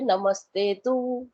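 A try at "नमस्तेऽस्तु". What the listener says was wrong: नमस्ते तू नहीं है, नमस्ते तू नहीं, नमस्तेस्तु आधा सा भी है।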